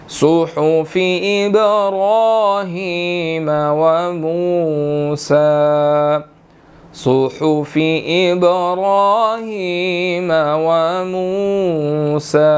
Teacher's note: با حروف قلقلہ میں سے ہے، یہاں پر ہم نے قلقلہ کرنا ہے · صاد کے اوپر پیش ہے، صاد موٹے حروفوں میں سے ہے، اس کو ہم نے موٹا ادا کرنا ہے